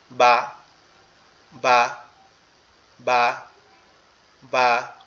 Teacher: এরপরে যখন আমরা বাটা উচ্চারণ করব, বাটা হচ্ছে আমাদের দুইটা ঠোঁট, এই যে ঠোঁট এখানে উপরের ঠোঁট, এই নিচের ঠোঁট, দুই ঠোঁট একসাথে লাগবে, লেগে পৃথক হয়ে যাবে এরকম ভাবে।